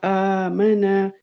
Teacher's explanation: یہ الف کے اوپر کھڑی فتح ہے تو اسے ایک حرکت کھینچیں گے، ایک انگلی کھولنے بند کرنے. اور میم کے اوپر حرکت ہے تو اسے کھینچنا نہیں ہے اور جھٹکا نہیں دینا.